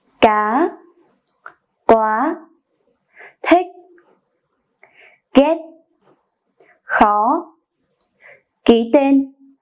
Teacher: this is a high tone. The pronunciation goes flat a little and then goes up, like the illustration on the screen. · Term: thanh sắc